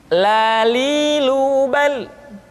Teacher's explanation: huruf la diucapkan dengan mengangkat ujung lidah kita, dengan disentuhkan dengan langit-langit